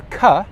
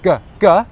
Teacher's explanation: touches the top of your mouth there that's the correct position K and G are a pair of consonant sounds and that means that they're actually exactly the same sound with the only difference being that for cur my voice is unvoiced my voice box stays still